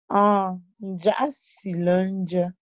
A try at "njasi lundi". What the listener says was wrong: Ne mets pas le coup de doigt sur nja là. Nja, nja.